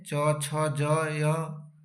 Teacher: च छ ज य इसका उच्चारण स्थान क्या है, तालु ही है।